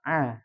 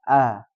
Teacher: huruf Ain dia lebih ditekan a sedangkan huruf hamzah dia biasa